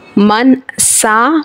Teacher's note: नून साकिन के बाद सीन आ रहा है, यानी हुर्फ़े इख्फ़ा का है। एक अलीफ इख्फ़ा गुन्ना करके पढ़ेंगे।